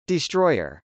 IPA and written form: dɪstrˈɔɪɚ (destroyer)